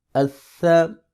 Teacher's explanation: یہ ثا ہے، سین نہیں ہے، اس کی سیٹی نہیں آنی چاہیے، سافٹ ایس ہے یہ